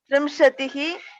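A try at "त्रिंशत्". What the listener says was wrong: Trimshat is not Trimshatihi. Trimshat.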